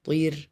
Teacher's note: The ra is light. And the ta is strong.